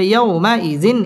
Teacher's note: জবরের বাম পাশে জজম ওয়ালা ওয়াও লিনের হরফ তাড়াতাড়ি পড়তে হবে